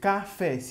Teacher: a última é a mais forte